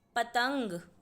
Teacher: पतंग बोलते समय त के बाद अंग की आवाज़ है, इसीलिए हम त पर बिंदी लगाएंगे और शब्द लिखेंगे पतंग।